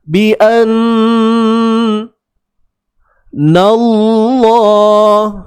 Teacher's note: kalimah Allah kena tebal. Sebab apa tebal? Sebab sebelumnya ada huruf yang berbaris atas, iaitu pada nun tu.